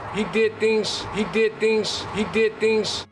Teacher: We use the voiceless equivalent, which is an S. So the Z sounds at the end of words turn into more of an S sound. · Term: devoicing of word final Z